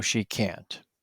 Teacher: Both can and can't have strong vowel sounds.